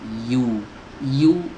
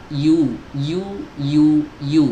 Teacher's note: Ya ini harus jelas keluarnya dari lidah bagian tengah. Yu, lidah bagian tengahnya pastikan terangkat teman-teman, terangkat mendekati langit-langit. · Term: huruf ya